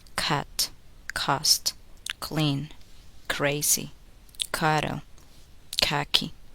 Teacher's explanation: Bring the back of the tongue to the balloon, stop the air completely, then release it with a voiceless sound. At the beginning of words, release k with a puff of air.